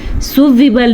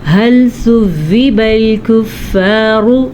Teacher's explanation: سین سیٹی کے ساتھ پڑھا جاتا ہے جبکہ سا نرمی کے ساتھ پڑھا جاتا ہے